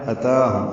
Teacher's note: تا کھڑا زبر ہے، 2 حرکات لمبا کریں گے